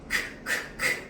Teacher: 무성입니다. 성대가 울리지 않아요.